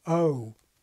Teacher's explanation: Today's SSB has quite a similar GOAT vowel, perhaps starting a bit more open